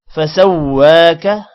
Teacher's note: وا لمبا ہوگا کھڑی زبر کی وجہ سے اور کا لمبا نہیں ہوگا۔ فعدلک، یہاں پر بھی کسی کو بھی لمبا نہیں کرنا.